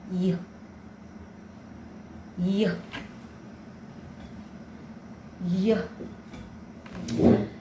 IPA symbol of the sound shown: j